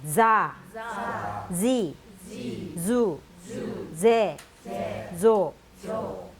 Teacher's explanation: 자, 그 다음에 자 모양의 자자랑 비슷하게 생겼지만 꼬리가 달렸죠. 그래서 이빨에 혀를 붙였다가 떼면서 바람 새는 소리가 나면서 Z 발음이 나야 됩니다.